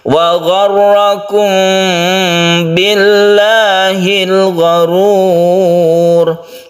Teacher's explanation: mim bertemu dengan ba itu tidak terlalu mingkem ya, itu yang betul sebenarnya. · Kenapa dia disebut ikhfa syafawi itu seperti itu? Memang tidak ketara karena mem dan ba itu sama-sama makhrajnya, tempat keluarnya yaitu di bibir, sehingga tidak ketara ikhfanya.